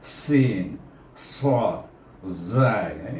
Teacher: berdesir macam haiwan ataupun macam unggas bunyinya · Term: safil